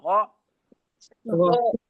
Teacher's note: गैन में हलक के इब्तिदाई हिस्से का इस्तेमाल होगा